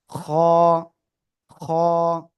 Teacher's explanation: গলার শেষ ভাগ থেকে উচ্চারণ হবে খ। বাংলায় খ এর মতো, ঠিক আছে।